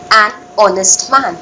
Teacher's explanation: even though you say the word honest starts with an H, the pronunciation is with the sound of O